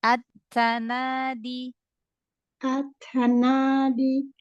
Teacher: Di, jangan ada hamzah.